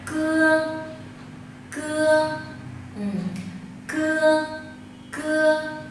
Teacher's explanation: Âm cuống lưỡi tức là sao? Vị trí phát âm sẽ là gốc lưỡi, cuống lưỡi, từ đó để phát ra âm.